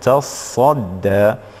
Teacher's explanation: نركز هنا على الصاد، فيها شدة ولذلك نعتني بها حتى لا يلتبس الأمر في قضية الروايات. إذن تصدى، والألف من تصدى دائما بالإمالة الصغرى